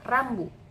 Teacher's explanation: konsonan getar dalam kata rambut merujuk pada bunyi konsonan R yang dihasilkan melalui getaran cepat lidah di dekat langit-langit mulut bagian depan · Bunyi R pada awal kata rambu merupakan contoh bunyi getar. Saat kita mengucapkan huruf R, ujung lidah kita itu bergetar dekat dengan langit-langit mulut dan menyebabkan pita suara kita juga ikut bergetar. Bunyi ini terjadi saat aliran udara yang melewati rongga mulut atau tenggorokan menyebabkan bagian alat ucap seperti lidah atau uvula itu bergetar secara berulang.